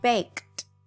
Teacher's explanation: you do not hear the E sound. You just hear the D